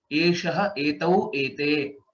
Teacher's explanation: Here it becomes eshaha. Sha is there instead of sa.